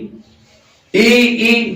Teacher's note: ई यानी जीभ से अग्र भाग से बोला जा रहा है